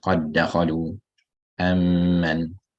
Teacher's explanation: Because of the idgham, there's no sakinat anymore. So the qalqala is not read.